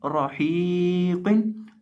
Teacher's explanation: रौ को हम मोटा करके पढ़ेंगे क्योंकि रौ के ऊपर ज़बर है